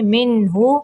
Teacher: یہاں پہ نون کو ظاہر کریں گے